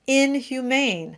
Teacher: If you listen closely, there's a subtle separation. It sounds like two words. And it's because of that pattern in English, that break that you get issues in French pronunciation.